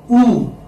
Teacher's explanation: Why? Because this is a single sound. Oo, there is no change in it. When the sound changes, okay, then only you have a diphthong. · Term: prolonged vowel sound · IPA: u: